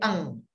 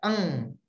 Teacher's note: Nun matinya disamarkan menjadi eng. Disembunyikan menjadi eng. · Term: ikhfa